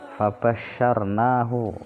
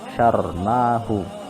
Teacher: ra tafkhim, ra dibaca tebal karena ra yang didahului huruf berharokat fathah. Sebelumnya kan ada shin fathah.